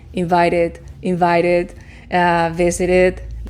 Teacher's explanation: La terminación es id. It, una I corta, it, invited, visited.